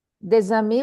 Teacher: we pronounce Z because we have a liaison.